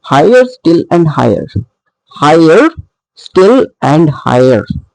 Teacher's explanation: the first one is a stressed syllable and the next one is unstressed. So all three are trochaic, and they together are called trochaic trimeter, as there are 3 feet, 1, 2 and 3.